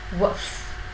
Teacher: Âm u ngắn là một âm hết sức là nhanh và lướt.